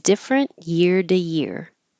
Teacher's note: the T changes to a d because it's between two uh voiced sounds